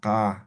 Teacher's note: Como si fuera la K, pero desde la garganta, ka. A ver, ka, no, no aspirado.